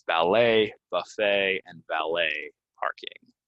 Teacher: we're not going to say the T, it's going to be silent, and it's going to end in A